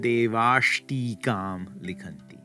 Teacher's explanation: Next, if we have devaha tikam likhanti, the gods write a commentary, it's going to become devash tikam likhanti. The visarga assimilates to the retroflex sh and they get stuck together.